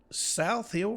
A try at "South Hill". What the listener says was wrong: It's Hill, one syllable.